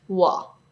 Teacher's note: When pronouncing the Mandarin “o”, Cantonese speakers often pronounce it as “ɔ”.